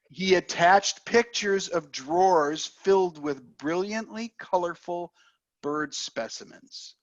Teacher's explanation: I'm going to emphasize the words attached pictures drawers filled brilliantly colorful specimens